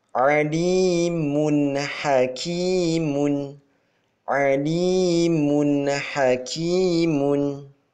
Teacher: Dhammataini bertemu dengan huruf ha. Dibaca secara jelas, terang, tanpa dengung.